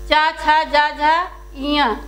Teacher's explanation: इतने वर्णों का उच्चारण स्थान कहाँ से होता है? तालु से होता है।